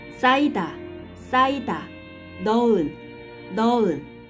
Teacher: When 받침 히읗 is followed by 모음 vowel, 받침 makes no sound and 모음 makes its own sound.